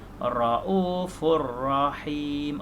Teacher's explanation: Tapi yang betul Raufur Rahim. Ra tetap dibaca tebal, dibaca tafkhim.